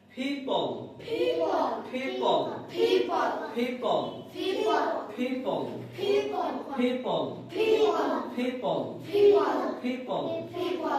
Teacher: একটা আওয়াজ বের হচ্ছে, ধাক্কা, ধাক্কা দিয়ে একটা বাতাস বের হচ্ছে, ঠিক না? এরকম একটা বাতাস বের হতে হবে। · যত প আছে সব কি হবে? এই যে এরকম হবে, ফ, ফ, একটা বাতাস বের হবে, বাতাস।